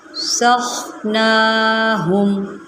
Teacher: یہاں پر سین ہے، سین کی سیٹی نکالیں اور خا اس کو ہم موٹا کر کے پڑھیں گے